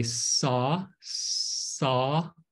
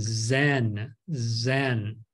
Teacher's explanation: the tongue is pretty much in the same position but the Z is voiced you have to vibrate your throat · we have the alveolar, the tongue and the ridge up on top of your mouth